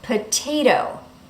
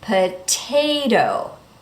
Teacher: In the first T, we say the T clearly. Why? Because the syllable that comes after the T is stressed. Potay, and then the next syllable is not stressed.